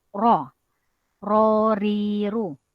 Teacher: ujung lidah naik kepada lelangit paling belakang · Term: huruf ro